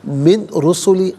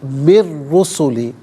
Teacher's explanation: را کی آواز ہوگی، نون ساکن کا ساؤنڈ نہیں ہوگا۔ را پر پیش ہے، را کو پر کر کے پڑھیں گے، مشدد ہے، جماؤ کے ساتھ پڑھیں گے۔ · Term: یرملون کا قاعدہ